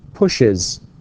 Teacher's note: There has to be some kind of vowel here. We need to include or to insert a vowel here because the sound is sh and ch